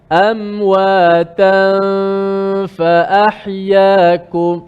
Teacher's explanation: So amwatan selepas sebut ta je, makhraj kita terus pergi pindah pada huruf fa. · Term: ikhfa